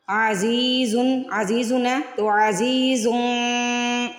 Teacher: اخفا کریں گے، نون کی آواز کو ناک میں چھپا لیں گے